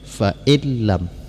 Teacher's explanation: Jadi nun ini tidak dibacakan lagi langsung fa'illam, nun tidak dibacakan lagi tetapi tidak didengungkan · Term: idgham bila gunnah